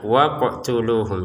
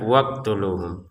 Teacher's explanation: untuk huruf qof-nya kan ada sukun ya, maka kita pantulkan